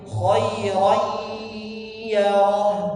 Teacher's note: ada dengungnya, ada suara yang keluar dari hidung.